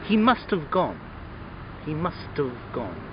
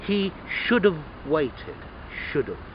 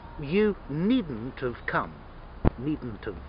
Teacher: notice in all of these, the contraction of have is pronounced of.